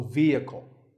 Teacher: next word is vehicle it's often pronounced wrongly as vehicle but the e is a long vowel and the h is silent